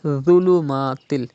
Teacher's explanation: Dha is a Mustaliya letter and it is also pronounced without whistle.